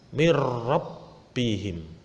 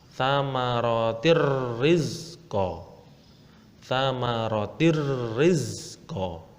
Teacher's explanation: Langsung masuk tanpa mendengung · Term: idgham bila gunah